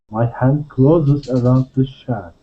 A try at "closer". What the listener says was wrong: The difference being is that you're saying closer using a Z sound. We want to use an S sound and say close, closer.